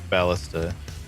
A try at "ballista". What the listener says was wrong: Ballista. No, it's not Batista. It's Ballista.